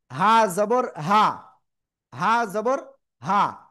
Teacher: হা জবর হা, গলা চেপে উচ্চারণ হবে।